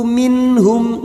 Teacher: nun sukun bertemu ha Idhar halq dibaca jelas tanpa mendengung · nun sukun bertemu ha idhar halqi dibaca jelas tanpa mendengung. Nun sukun atau tanwin yang bertemu dengan 6 huruf ini, perhatikan hamzah, ha, ha, kha, ain, ghain dibaca jelas tanpa mendengung.